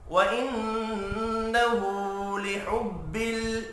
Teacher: नून मुशद्दद पर गुन्ना करेंगे, उल्टा पेश को एक अलिफ के बराबर खींच कर पढ़ना है।